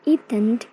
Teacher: In the case of the, s, z, followed by n, the plosive is nasally released by lowering the soft palate, so that in the word eaten, for example, the tongue does not move in the toned sequence, but the soft palate is lowered at the end of the, so that compressed air escapes through the nose.